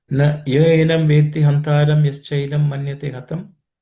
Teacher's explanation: None of the letters here are aspirated